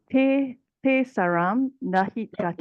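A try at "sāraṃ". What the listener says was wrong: Sara. Sara. This is long A, long A. Sarang.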